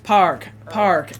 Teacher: Now, for most Irish speakers, the R is always pronounced.